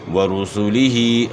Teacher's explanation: ورسولہ دونوں جگہ جو ہے پیش کو آپ نے معروف ادا کرنا ہے، یعنی پیش کی ادائیگی میں آپ نے ہونٹ گول کرنا ہے تاکہ پیش معروف ادا ہو، مجہول نہ ہو جائے. اور کھڑی زیر کو 1 الف کے مقدار کے برابر کھینچنا ہے. · را موٹی پڑی جائے گی کیونکہ را کے اوپر پیش ہے. جب بھی را کے اوپر زبر یا پیش ہو تو را کو موٹا پڑھیں گے.